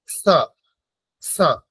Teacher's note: জিহ্বার যে অগ্রভাগ, সামনের ভাগটা, সেই অংশটা দাঁতে এসে স্পর্শ করবে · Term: দন্ত স